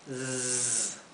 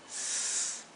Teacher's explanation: Y aquí la S intenten que sea zumbada. Zzz. No es una S como del español, no es s, es is, ¿sí?